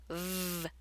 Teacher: The V is pronounced by touching your top teeth to your lower lip and letting your vocal cords vibrate as the air escapes.